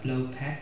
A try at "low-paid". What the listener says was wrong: The low paid, phát âm lại từ pay nha, pay. Nó là pay, giống như từ này nè. Giống như pay, nhưng mà em thêm D cho thôi. Paid, low paid, yes, low paid.